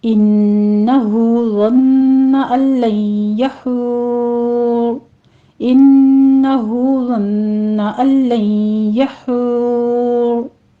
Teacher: हमने इसको मद आरिज़ वक्फ़ी हो रही है तो 6 काउंट करना है, ठीक है। एंड पे हमने मद खींचनी है 6 हरकत के बराबर।